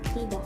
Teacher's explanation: kata bunyi ka sering berubah menjadi bunyi hentian glotal